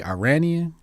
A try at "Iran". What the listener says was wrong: Iran. You don't say it like I. You say Iran.